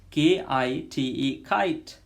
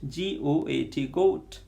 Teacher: velar sound back of the tongue touches soft palate that is vellum